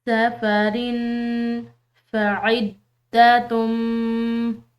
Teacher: آگے دیکھیں۔ سفرن، را کی تنوین ہے، اس کے بعد فا حروف اخفاء میں سے ہے تو یہاں پر ہم نے اخفاء کرنا ہے